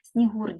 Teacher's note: снігур ділиться на 2 склади останній склад наголошений